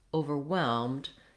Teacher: So in the word overwhelmed, you want your main stress to be on the whelmed syllable. It's only 3 syllables, so even though it looks like it might be overwhelmed, like 4 syllables, all of this last part is 1 syllable, whelmed.